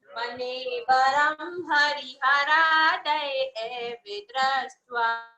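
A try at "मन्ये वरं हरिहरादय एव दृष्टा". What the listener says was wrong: दृष्टा है, दृष्टवा नहीं है। तो मन्ये वरम हरिहरादय एव दृष्टा, दृष्टेषु येषु हृदयं त्वयि तोषमेति, किं वीक्षितेन भवता भुवि येन नान्यः, कश्चिन्मनो हरति नाथ भवान्तरेऽपि।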